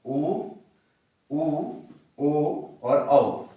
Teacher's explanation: इनको उच्चारण करने में हमारे जो ओष्ठ हैं इनकी आकृति वृत्ताकार होती है। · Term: वृत्ताकार स्वर